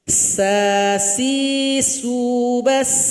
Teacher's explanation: Ketika dia sukun banyak bunyi hamasnya, banyak suara angin yang keluar.